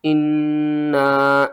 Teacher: نون مشدد ہے، غنہ کریں گے، 2 بار پڑھیں گے، سختی کے ساتھ پڑھیں گے۔